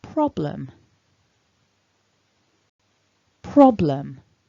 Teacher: in order for prob to carry the word stress we need to weaken the second syllable